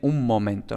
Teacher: lo normal es que la asimilación simplemente se quede en una m un poquito más larga